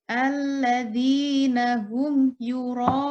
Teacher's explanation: Mad wajib muttasil ini cara membacanya panjang 6 ketukan.